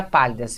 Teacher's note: Agora a gente tem a palavra pálidas. Veja, a última sílaba não é a tônica, nem a penúltima, é a antepenúltima sílaba.